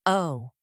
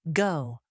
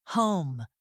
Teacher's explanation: The American O starts narrow and then moves wider. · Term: long O sound